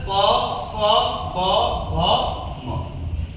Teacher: ओष्ठ वर्ण दोनों होठों का आपस में मिलना, यानी जो भी वर्ण का हम लोग उच्चारण करेंगे तो ये दोनों ओठ जो होंगे आपस में क्या करेंगे, मिलेंगे, और इनके मिलने से क्या होते हैं, वर्णों का उच्चारण।